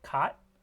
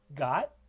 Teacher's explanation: The only difference between them is the state of the glottis. The first one, cot, is voiceless, and the second one, got, is voiced. If you put your fingers in your throat, you could probably hear a little tiny bit of vibration because it is such a short stop sound. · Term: velar stop